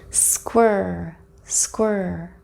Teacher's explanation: When we move from W to ER, my lips relax a little so they're not as round as they are when I say the W sound.